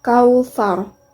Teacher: Lam Qomariah karena alif lam bertemu muka dibaca secara jelas al-kautsar Mad layyin karena huruf wau sukun didahului oleh huruf Kaf berharokat fathah dibaca panjang dua harokat